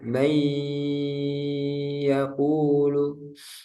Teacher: Setelah dimasukkan atau dileburkan ke huruf yang kedua, kemudian ditambah dengan gunnah. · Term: idgham bi gunnah